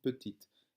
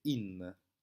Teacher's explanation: Mais on va aussi retrouver un e final. Et le E final, lorsqu'il n'est pas accentué, il va être considéré comme muet. C'est la même chose qu'en français, lorsque vous dites par exemple petite.